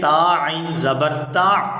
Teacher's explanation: تا کو عین ساکن کے ساتھ ملائیں گے